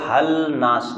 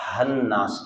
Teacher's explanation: اس کو ہل ناس نہیں کہنا، ہا کو نون سے ملا دینا ہے، ہن ناس کہنا ہے، اور سین کو عین کے ساتھ ملا دینا ہے.